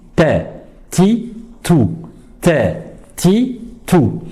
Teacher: Alors, premièrement, comment mettre la langue? La langue, il faut la mettre à la racine des incisives supérieures, juste au début du palais. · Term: lettre T